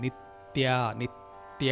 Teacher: నిత్య తా అన్నప్పుడు చక్కగా మీరు గమనిస్తే నాలిక పై దంతాలకు తగ్గుతుంది.